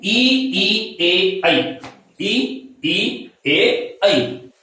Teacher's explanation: अग्र स्वर का मतलब है कि जिह्वा का अग्रभाग उत्थापित होता है। जिह्वा का अग्रभाग उत्थापित होता है।